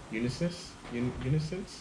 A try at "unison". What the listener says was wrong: Unison? Unison. Yeah, I think you said unisons.